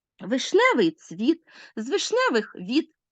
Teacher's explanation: ямб наголошується другий склад